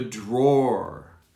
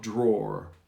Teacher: you almost don't pronounce the w draw like roar a lion roars look in the drawer i